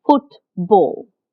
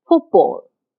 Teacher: And the first sound of ball, b, is a voice sound. Now, the voicelessness from the t influences the voicing of b, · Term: co-articulation